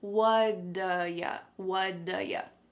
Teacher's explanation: that T at the end of the word what is going to change to a D sound. This is really typical of American English, where a T that's surrounded by vowel sounds is going to change to a D. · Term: flapped T